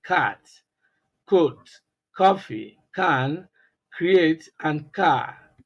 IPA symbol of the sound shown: K